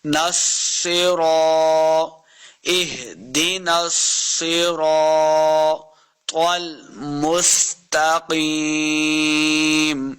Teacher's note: نون کو سواد کے ساتھ ملانا ہے. سواد اور را اور طا تینوں کو ہم نے پر پڑھنا ہے، یعنی موٹا کر کے پڑھیں گے